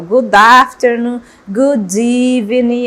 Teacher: A gente faz essa ligação entre uma consoante e vogal, tá? Para a pronúncia ficar mais natural.